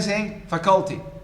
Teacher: I hear many saying faculty, stressing the second syllable, which is Manglish, not English.